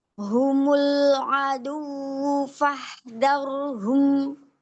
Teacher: Angkat sedikit ya roynya. Tahan sedikit ya supaya dia menjadi lebih tafkhim ya.